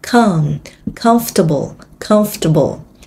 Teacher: Nó sẽ có cái tính từ là comfortable nhấn âm Một